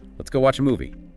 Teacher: Suggestive tone, maybe slight emphasis on movie.